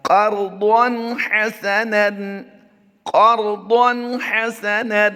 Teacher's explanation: تنوین میں ہم اظہار کریں گے، یعنی غنہ نہیں کریں گے